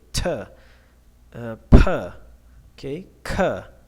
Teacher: You can feel that some air escape when you are pronouncing them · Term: aspirated sound